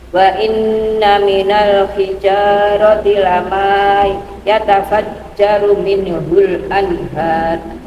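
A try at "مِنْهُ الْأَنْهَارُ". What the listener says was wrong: Jangan sampai tawallun gitu, Bu. Tawallun itu artinya apa? Memantulkan suara lagi. Min harus lepas. Enggak boleh minhul. Nah, itu namanya tawallun.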